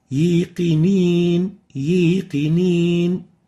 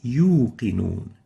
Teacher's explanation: The fourth mistake of the wow is mixing the wow sound with a ya sound